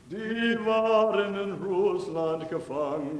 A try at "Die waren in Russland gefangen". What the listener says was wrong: You said gefangen. You're going to have to really practice to get out of that. Gefangen, not gefangen, no g.